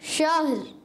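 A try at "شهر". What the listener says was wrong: شہر اگر آپ کریں گے شہر تو ہا پر زبر آ گئی، یہ غلط ہو جائے گا. شہر اور آپ نے کیا شہ اور را غائب ہو گیا تو بھی غلطی ہو جائے گی. تو آپ نے ہا بھی ساکن رکھنا ہے، را کو بھی ساکن رکھنا ہے.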